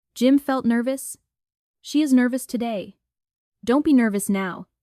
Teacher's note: Hear the stress on nur. Let the rest relax. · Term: stress on ner